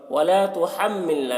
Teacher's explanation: میم مشدد ہے، میم میں غنہ کریں گے